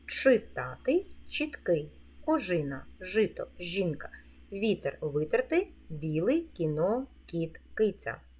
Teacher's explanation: буква і є в наступних словах вона пом'якшує попередній приголосний звук